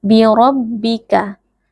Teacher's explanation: RO di sini juga tebal karena ro berharakat fathah jadi dibaca dengan mengangkat pangkal lidah